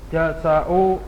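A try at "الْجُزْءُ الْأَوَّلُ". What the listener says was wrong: Nah, juz. Za maskun. Syekh. Huruf Z-nya disukun.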